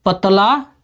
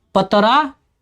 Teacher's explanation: मेरा कहने का मतलब यह है कि भोजपुरी में अड़ और ल के स्थान पर र का प्रयोग होता है